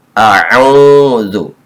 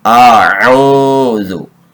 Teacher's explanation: A'udzu. A berharokat fathah dibaca pendek. Kemudian ain waw sukun doma'u dibaca panjang. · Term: mad tabi'i